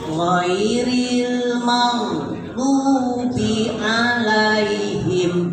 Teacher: Ketika ada ghin disukun tidak boleh dipantul. Kumargi sanes huruf qola.